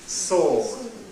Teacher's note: We've got the full length, monophthong, or lenisty, sword.